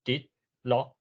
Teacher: 若是海口腔会位低到悬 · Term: 第八调